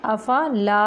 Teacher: حمزہ جھٹکے سے پڑھیں گے، افلا، لا نہیں کریں گے، آواز کو منہ سے نکالیں گے، لا ادا کرتے ہوئے۔